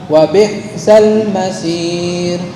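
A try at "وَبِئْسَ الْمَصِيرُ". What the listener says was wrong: Kurang tipis, masir.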